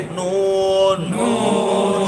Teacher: জিহ্বার আগা সেই বরাবর উপরের তালু হইতে